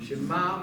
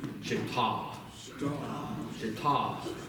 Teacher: there's really a difference in tone between my mother mid-tone and my father low tone